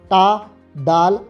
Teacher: इसमें जबान की नोक ऊपर होकर पीछे की तरफ मुड़ती है और फिर तालू की तरफ छूती है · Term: माकू स